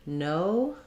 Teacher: you're starting in the O position that's probably the same as your native language and then just closing and relaxing a little bit as you go